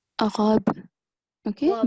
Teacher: in the last verse on this letter ba sakin, we have to perform the rule of qalqala, so jerking sound.